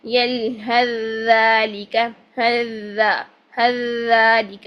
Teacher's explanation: سا کو ختم کریں گے اور ذال کے ساتھ پڑھیں گے یلہذالک ہذالک یوں. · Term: سا کا ذال میں